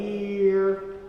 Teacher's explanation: Remember what we said about the word year, right? It's ye, So you sing a schwa instead of a r, because we don't want to hear.